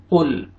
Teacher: قاف کو آپ نے موٹا کر کے پڑھنا ہے، لام کو آپ نے ہلانا نہیں ہے